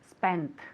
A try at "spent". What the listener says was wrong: Excellent with the T.